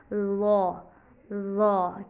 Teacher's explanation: आवाज़ को भारी करने के लिए हम लिप्स को राउंड करते हैं, मुंह के अंदर आवाज़ रहती है